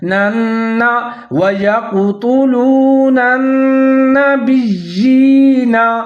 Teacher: آگے جو نون ہے مشدد ہے، تو دونوں نون کو ساتھ میں ملا کے پڑھیں، ادغام کریں گے غننے کے ساتھ